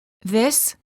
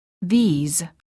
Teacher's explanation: the word this with the short e sound and a s the word these is plural and is pronounced with a long vowel e and a z sound